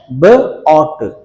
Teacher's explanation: ओ कहते हुए lip sound है, लेकिन there is no obstruction in the air passage. जो ओरल कैविटी वहां पर कोई ऑब्स्ट्रक्शन नहीं हो रही.